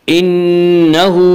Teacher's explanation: نون مشدد غنہ ہوگا، ایک الف کی مقدار غنہ ہوگا